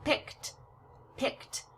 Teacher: a t sound is what we hear when we pronounce the Ed